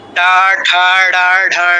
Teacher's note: খেয়াল করে দেখুন, টা উচ্চারণ করার সময় জিহ্বাটা বেঁকে যাচ্ছে। টা উচ্চারণ করার সময় কি হচ্ছে, জিহ্বাটা বেঁকে গিয়ে মূর্ধা থেকে ঘষা দিয়ে নামছে, জিহ্বার আগাটা, অগ্রভাগটা। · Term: মূর্ধন্য বর্ণ